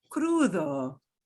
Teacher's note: d is between two vowels so the d will get a really soft soft like a fifth of the sound